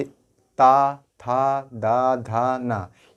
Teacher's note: ये सब हमारे दांत में स्पर्श हो रहे हैं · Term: दंत व्यंजन